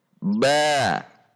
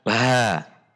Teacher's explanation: Jadi ada dorongan udara dari dalam keluar. Tetapi harus dibaca dengan sifat jahr. Dengan menekan pada titik makhraj.